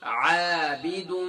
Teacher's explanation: اب یہاں دیکھیں، یہاں یہ ذہن میں رکھیں کہ یہاں تنوین کے بعد میم ہے، تو یہاں دال میم دو پیش دم عابدم میم الف زبر ما، تو گویا کہ میم مشدد ہے، میم دو مرتبہ پڑھی جا رہی ہے